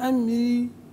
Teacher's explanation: الاهتمام بترقيق الراء في هذا الموضوع